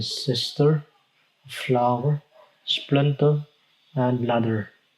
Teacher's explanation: So second, there's the trochee, which consists of one stressed syllable followed by an unstressed syllable. It is pronounced as da, as in sister, flower, splinter, and ladder.